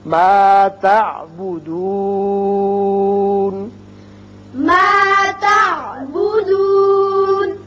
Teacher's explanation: تو دون کو آپ کھینچ سکتے ہیں، 1 2 3 الف تک آپ کھینچ سکتے ہیں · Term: مد وقفی